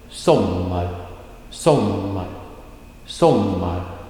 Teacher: you can hear that the beginning of the word is a falling down